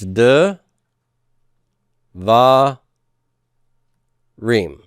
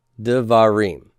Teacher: where is my stress on this word? It's on really the reem, right?